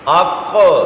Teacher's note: اور ابھی سبق میں آپ نے پڑھا کہ یہ قلقلہ حرف بھی ہے، قطبو کا پہلا ہی حرف، تو قلقلہ بھی ہوگا کیونکہ یہ ساکن ہے. اق، موٹا بھی پڑھا، آواز لوٹتی ہوئی بھی نکلی، قلقلہ بھی ہوا